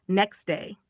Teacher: Sometimes sounds get dropped completely. Example, next day sounds like next day the t sound is gone. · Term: dropped sounds